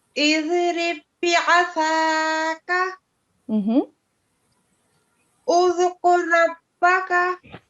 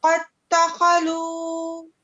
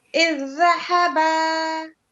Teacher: this type of the idgham is called idgham al-mutamasilin, or assimilation of two identical letters. You can find here ba and ba, ra and ra, dal and dal, zal and zal.